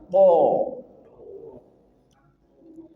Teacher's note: kalau th pangkal lidah diangkat sehingga dia tebal. Th sama dengan ta th angkat pangkal lidah th.